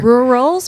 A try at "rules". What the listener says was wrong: One syllable, not two.